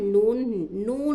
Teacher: जबान की नोक को ऊपर के दांतों के मसूड़ों को लगाने से नून निकल है